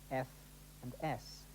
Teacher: these don't use the vocal cords they rely instead on the turbulent flow of air through a narrowing in the vocal tract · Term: unvoiced sounds